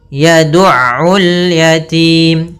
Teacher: Kemudian pada lafaz ul yatim, di sini ada alif lam qamariyah, alif lam yang ditulis dan dibaca dengan jelas lamnya